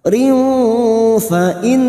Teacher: Nun yang bertasdid kita dengungkan dua atau tiga harakat